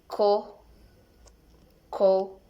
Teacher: Characteristic velars stop and voiceless.